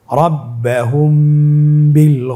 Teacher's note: এখানে দুই ঠোট মিলিয়েও পড়া যায় এবং দুই ঠোট ফাঁকা রেখেও পড়া যায়। · মিম সাকিনের পরে যদি বা আসে অবশ্যই মিম সাকিনকে গুণ না করে আমরা পড়ব। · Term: ইফা সাফাবি